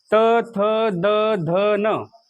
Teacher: हे शब्द म्हणत असताना तुम्हाला तुमची जीभ दाताला लावावी लागते. त, थ, द, ध, न दाताला जीभ लावल्याशिवाय तुम्ही हे शब्द म्हणू शकत नाहीत.